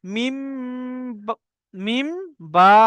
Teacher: নুন সাকিনের পরে বা এলে তবে নুন সাকিনকে মিম দ্বারা পরিবর্তন করে একালি পরিমাণ গুণা করে পড়তে হয়। তো আমি যখনই বাকে পড়বো, উচ্চারণ করব, তখনই আমি মিম পড়বো। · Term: ইকলাব